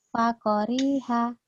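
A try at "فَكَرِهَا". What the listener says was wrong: Ka, bukan ko. Ka, fa-nya pendek lagi.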